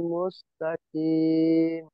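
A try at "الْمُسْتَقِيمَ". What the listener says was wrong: মুস্তাকিম, কি কি গজিবার গোড়া দিয়ে মুস্তাকিম। মুস্তাকিম কাফ হয়ে যাচ্ছে, কাফ, এই যে এই কাফ হয়ে যাচ্ছে, মুস্তাকিম, মুস্তাকিম।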